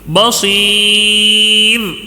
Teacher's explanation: بصیر را کو باریک کر کے ہی اس کو روکنا ہے